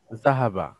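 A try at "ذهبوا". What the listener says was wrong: আর তারা পুরুষ গিয়েছে, একটু লম্বা করে বলতে হবে, জাহাবু,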